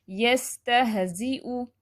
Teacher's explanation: جو حمزہ لاسٹ پہ آ رہا ہے اس کو جھٹکا نہیں دیں گے